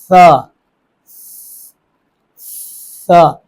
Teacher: کند سیٹی نکلے گی، تیز سیٹی نہیں، یہ نہیں کہ آپ آواز کو روک دیں، اگر آپ نے آواز کو روکا تو وہ تا بن جائے گا